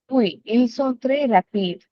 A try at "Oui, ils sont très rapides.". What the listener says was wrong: Very nice. Okay.